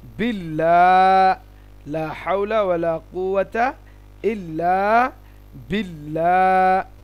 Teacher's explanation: আল্লাহ লামের পূর্বে জের থাকলে আল্লাহ লাম পাতলা হয়